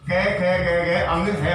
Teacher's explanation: तो हमें सिर्फ इतना याद रखना है कि ए आ और कै वर्ग, है और विसर्ग, क्योंकि ये इनका जो उच्चारण स्थान है वो कंठ होता है, इसलिए इनको कंठ वर्ण के नाम से जानते हैं।